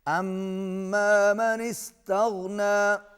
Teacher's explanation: میم مشدد ہے، غنہ ہوگا